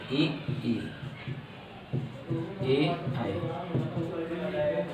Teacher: इनको बोलने में जीवा जो है आगे आ जाती है